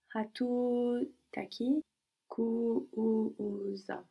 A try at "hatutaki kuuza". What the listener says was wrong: Hatutaki kuuza. No, again we have three U's. Kuuza. Hatutaki kuuza.